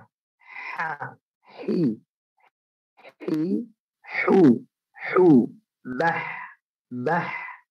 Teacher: tenggorokan bagian tengah H dia harus halus ya. H bersih, tidak ada he-nya, bukan H tapi H.